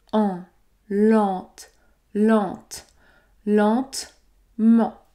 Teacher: t ici nous allons également prononcer la voyelle nasale en en nous prononçons la voyelle nasale en dans la première syllabe · on va effectivement prononcer les lettres E-N-T à la fin et on va donc prononcer la voyelle nasale en · Nous prononçons la voyelle nasale en dans la première syllabe, car vous avez les lettres E, N plus une consonne T.